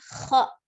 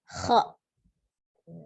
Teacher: dengan tidak memonyongkan bibir ya pengucapannya kha, tapi ada hamzah sukun di belakangnya. Ketika sudah berfathah kan tidak boleh memonyongkan bibir, kemudian tidak boleh ada hamzah sukun ya kha.